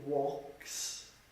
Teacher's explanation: you have the S sound, for example in walks. Then you have the Z sound, for example following the Y for plays. And then you have the IZ sound